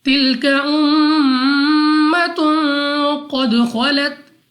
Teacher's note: میم مشدد غنہ کر کے پڑھیں گے، اور غنہ کے معنی ہے ناک میں لے جا کر پڑھنا، اور غنہ کی مقدار بھی 2 سیکنڈ کے برابر ہی ہے، یعنی ہم غنہ کو 2 سیکنڈ تک کھینچ کر پڑھیں گے، 2 سیکنڈ تک لمبا کریں گے۔ · غنہ کرنے کے بعد قاف کو موٹا یعنی پر پڑھنا ہے